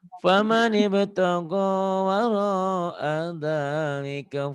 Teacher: cuman di ka-nya aja tadi panjang, harusnya pendek